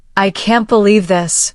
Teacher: If you say, I can't believe this, with a downward tone, it may show disappointment.